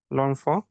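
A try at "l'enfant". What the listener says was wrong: ওকে, লনফ না, এটা ওয়েন কে আমরা জাস্ট অ বলবো, হ্যাঁ, অন বলবো না, ঠিক আছে? অ, ওয়েন কে অ বলবো, আইএন কে অ বলবো, ওএন কে অ বলবো, ঠিক আছে?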